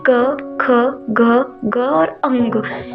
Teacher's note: एक कंठ से इनकी ध्वनि निकलती है। क वर्ग का उच्चारण करते समय कंठ से आवाज आती है।